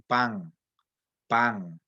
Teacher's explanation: lo que llamamos una nasal velar que existe en el español de costa rica